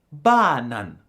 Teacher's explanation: there is accent one, and this goes from high to low. So, the first syllable has a high tone and the second has a low tone. This is the case for the word banana which is therefore said like banan. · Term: accent 1